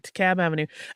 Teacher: we don't pronounce the L